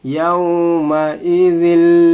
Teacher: जाल को हम लोग लाम से मिला रहे हैं